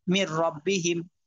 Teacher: নুন সাকিনের পরে র আসছে, কিন্তু গুন্না হয় নাই। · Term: গুন্না ছাড়া মিলাইয়া